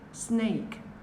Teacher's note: Các bạn bật âm K trong cổ ạ.